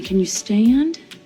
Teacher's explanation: como ela meio que conecta esse can you stand? E daí ela deixa esse stand bem longo